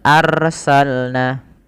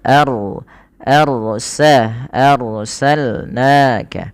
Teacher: dan ini tidak boleh dibaca dengan arsalna Nah itu rnya tipis nah dia dibaca dengan ro yang tebal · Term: ro tafkhim